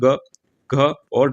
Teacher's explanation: ग, घ और ड ये भी कंठ्य वर्ण कहलाते हैं क्योंकि इनका उच्चारण कंठ से होता है। याद रखिएगा, और ये आते हैं क वर्ग के अंतर्गत।